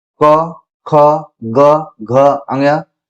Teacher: कंठ के अंतर्गत क ख, ग, घ, ङ